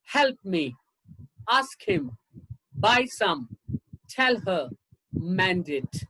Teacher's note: i'm putting the stress only on the first syllable and the first word of course me him somehow it i'm not putting a stress